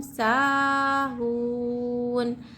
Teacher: वाव साकिन से पहले हरकत पेश है तो यहाँ वाव मद हो रहा है, एक अलिफ की मकदार खींचना चाहिए